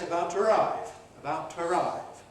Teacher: To has its prevocalic weak form to ask, to eat, to arrive, which can then compress to twa.